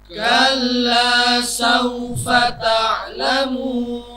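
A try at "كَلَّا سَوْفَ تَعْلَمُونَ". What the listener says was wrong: Nah, untuk kaf ya, jangan terlalu kalla, tidak, biasa saja. Kalla. Nah, memang ada sebagian qori itu ketika membaca kaf itu desisnya dominan. Kal. Jadi ketika berharokat itu sudah ada kalla. Nah, kayak ada desis.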